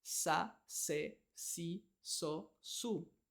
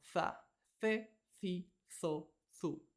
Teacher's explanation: en Latinoamérica la z también suena como una s